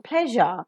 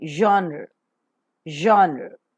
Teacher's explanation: voiced because the vocal cords vibrate palito alveolar because the palate and the alveolar Ridge are involved · the air that is coming out from the lungs passes through this passage with audible friction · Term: fricative